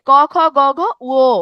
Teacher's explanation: এগুলোর উচ্চারণ স্থান আসতেছে কণ্ঠ থেকে। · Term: কণ্ঠধ্বনি